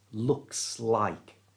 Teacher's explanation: notice the S on the end of looks. Acts like a magnet and pulls the word like into it. So it's looks like, not looks like, looks like.